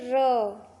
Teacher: और अब हम लोग लुंठित या प्रकंपित वर्ण, जिसको बोलने में जीभ हमारी मुड़ जाए और थोड़ा सा घरघराहट की आवाज़ आए, तो उसको हम लोग लुंठित या प्रकंपित वर्ण कहते हैं।